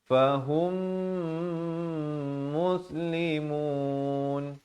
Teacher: Hum itu mim mati bertemu mim kena dengung dua harakat